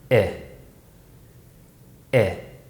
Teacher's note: this sound is produced with the front of the tongue High and the lips smiling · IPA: /ɪ/